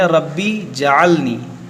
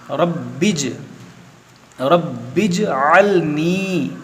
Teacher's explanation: जीम पर ज़बर लगाकर नहीं पढ़ना है, इसको बा से मिलाकर पढ़ना है